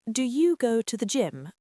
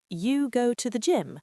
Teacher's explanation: Do you go to the gym versus you go to the gym? The first one sounds like a real question. The second sounds like surprise or disbelief.